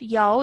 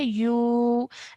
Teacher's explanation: this is a vowel madda. So this is pronounced with an elongation